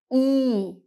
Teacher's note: when you say E, you stretch out your lips a little more and it's a long sound. E. Your lips should feel a little tighter too. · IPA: /i:/